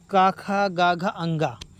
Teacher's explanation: का वर्ग की ध्वनियाँ कंठ से बोली जाती हैं।